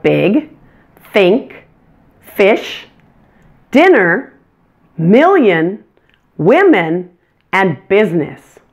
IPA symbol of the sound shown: ɪ